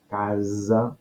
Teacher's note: entremig de vocals equival a una S sonora